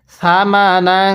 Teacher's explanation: নুনের মধ্যে গুনাহ করতে হবে। নিয়মটা স্মরণ রাখবেন, তানভিনের পরে যদি ওই ইকফার হরফ থেকে কোনো একটি হরফ থাকে তাহলে তানভিনটাও গুনাহ করে পড়তে হয়।